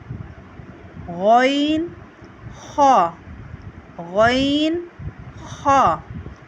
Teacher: حلق کے اوپر والے حصے سے اسے ہم ادا کرتے ہیں۔ حلق کا جو اوپر کا حصہ ہے، یہاں سے ہم اسے ادا کرتے ہیں۔